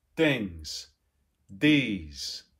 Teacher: move towards sort of a t and a d that are either dentalized t and d or are laminalized